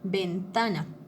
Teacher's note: Entonces, ese ta, esa sílaba ta, es donde yo tengo que hacer un poquito más de esfuerzo para pronunciarla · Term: acento